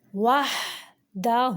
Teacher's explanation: وحدہ جو الٹا پیش ہے اس کی 2 حرکات عربیہ جتنی لمبائی ہوتی ہے